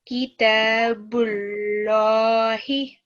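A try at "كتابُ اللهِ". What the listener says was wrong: One more time, but don't make the ba itself thick, okay? It's only the lam that becomes thick and heavy. Kitabullahi.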